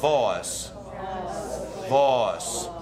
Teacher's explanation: get rid of that diphthong just making one aw like boss